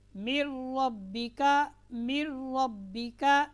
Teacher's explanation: قاعدہ ہے نون ساکن اور نون تنوین کے بعد، یہاں پر نون ساکن کے بعد اگر لام یا را آ جائے تو نون ساکن اور نون تنوین کو کیا کریں گے، لام اور را کے ساتھ ملا دیں گے، ایسا ملائیں گے کہ غنہ نہیں ہوگا۔